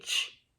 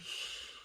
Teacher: Ch is a stop sound, right? Sh is continuous.